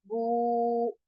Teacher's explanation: ये जो ऊ की साउंड है ये आपके मुंह के खाली हिस्से से अदा हो रही है, तो ये इसका मखरिज है जिसको हम जोफे दहन कहते हैं।